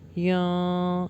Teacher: یہاں پر ہوگا اخفا لیکن باریک